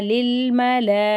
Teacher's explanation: 4லிருந்து 6 அலிஃப் வரைக்கும் நம்ம நல்லா நீட்டி ஓதணும். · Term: மத்தே முத்தசில்